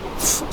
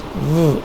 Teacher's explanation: In the fricatives, which we will discuss now, f sound is labiodental, the same as v sound, but this one, f sound, is voiceless, this one is voiced.